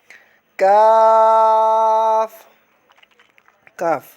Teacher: یہ زبان کی جڑ اور تالو کے سخت حصے سے ادا ہوتا ہے۔ اس کو 5 انگلیوں کے برابر کھینچ کر پڑھنا ہے اور اس کو موٹا نہیں پڑھنا کیونکہ یہ حروف مصالیہ میں سے نہیں ہے۔